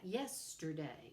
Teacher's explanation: three syllables with the stress on the first · And there's dactylic, the opposite of that, yesterday. So three syllables with a stress on the first syllable